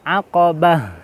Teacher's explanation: kalau di akhir ayat atau di akhir kalimat itu kita bacanya kalau dimatikan menjadi seperti ha.